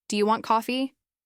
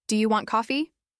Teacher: If you say it with a flat tone, do you want coffee? It sounds like you're making a statement or maybe giving an order.